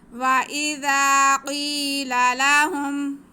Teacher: آگے زال پہ زبر ہے اور ساتھ میں الف ہے، تو یہ الف مدہ ہو گیا، تو زال کے بعد ہم ایک الف کے برابر کھینچیں گے بھی اور زال کو نرمی سے پڑھیں گے